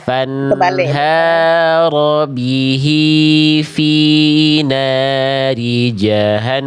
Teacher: N-nya nun tasdidnya tahan, namnya pendek karena fathahnya nggak ketemu alif